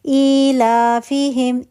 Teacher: ایلافیہم، ای حمزہ زیر تھی، حمزہ ساکن تھا، حمزہ ساکن زیر کی نسبت سے یا میں بدل گئی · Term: مد بدل